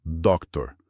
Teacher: atenção ao R final americano. É ele que diferencia da pronúncia brasileira de doutor